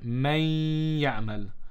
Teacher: we need to join them both together and read with ghunna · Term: idgham ma'al ghunna